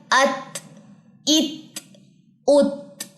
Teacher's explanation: ता के अंदर चूंकि हमस की भी सिफत है इसमें सांस जो है वो जारी होती है · تا کے اندر چونکہ ہمس کی بھی صفت ہے، اس میں سانس جو ہے وہ جاری ہوتی ہے